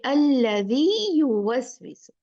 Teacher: इसीलिए ये मद तमकीन जब दो या साथ में या दो वाव साथ में, हमें बाज रखती है कि हम उसको एक या जो है उसको दूसरे या में, या एक वाव को दूसरे वाव में मर्ज ना कर दें, उनका इदगाम ना कर दें, बल्कि दो काउंट जो बन रहा है उसको कायम रखें